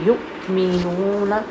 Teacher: آمیسما، جب یہاں پر وقف ہے، اس کو وقف کریں گے تو حمزہ کو ساکن کر دیں گے۔ جب حمزہ ساکن ہوتی ہے تو آپ کو پتہ ہے کہ اس کی ساؤنڈ میں جھٹکا آتا ہے